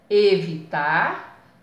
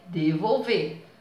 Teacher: palavras com a última sílaba alongada, ou seja, que elas sejam oxítonas